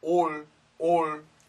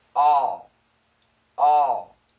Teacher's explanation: this is an aw sound we don't say or or we say all all